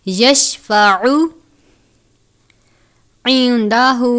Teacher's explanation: عین کو آپ نے الف کی طرح نہیں پڑھنا یعنی سادہ نہیں پڑھنا، عین کو حلق سے ادا کرتے ہیں